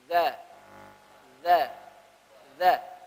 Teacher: Karena zal memiliki sifat rakhawah, getaran mengalir. · Atau dalam keadaan sukun, misalnya, atau dalam keadaan tasdid, maka dia harus ada getaran yang ngalir. Tapi getaran yang mengalir untuk zal yang berharakat, getarannya akhaf. Lebih ringan.